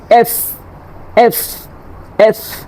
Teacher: এফ বলার সময় উপরের দাঁত নিচের ঠোঁটের সাথে লাগবে এফ এফ এফ এবং এটা বাতাস বের হবে দেখেন এফ এফ